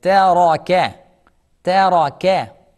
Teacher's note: And in the middle, ra is heavy.